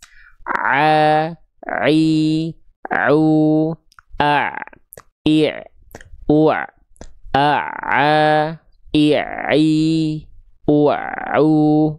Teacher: Nah, ini namanya bagian katup epiglotis. Nah, Ain dan H kecil itu di bagian tengah tenggorokan yang berkontraksi nanti bagian katup epiglotis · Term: huruf ain